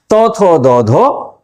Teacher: তারপরে আসছি দন্তধ্বনি। জিহ্বার অগ্রভাগ ওপরের দাঁতকে স্পর্শ করে শ্বাসবায়ুকে বাধা দিচ্ছে, তখন যে ধ্বনি উৎপন্ন হচ্ছে সেগুলো হচ্ছে দন্তধ্বনি।